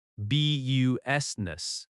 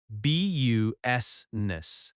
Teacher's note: The I in the middle is not strongly pronounced.